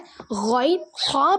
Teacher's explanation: தொண்டையின் மேல் பகுதியில் ஹைன் ஹா பிறக்கிறது